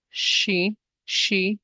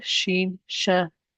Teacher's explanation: So my mid the middle part of my tongue does not directly touch the roof of the mouth. However, it is raised up and almost indicates that it will touch the roof of the mouth.